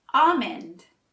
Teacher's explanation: but the L is actually silent